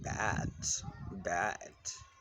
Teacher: This is basically open mind front unrounded vowel as in bat, and near open front unrounded vowel as in bat